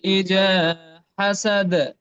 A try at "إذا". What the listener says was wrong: জি, ইজা হয়ে যাচ্ছে ওটা, ইজা, জালদের মাখরাজটা একটু পরিষ্কার করবেন।